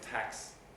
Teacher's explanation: how many sonority peaks there's one for ah and then you go down again for the c and then back up for the s so you have two peaks there giving you tax again the